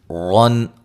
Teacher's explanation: را کو موٹا ادا کریں گے، نون تنوین کا اظہار ہے